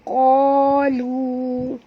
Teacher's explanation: Qa tebal, jangan baca ka, baca qalu